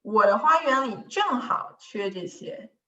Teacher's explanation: So I will place the emphasis on 正 好.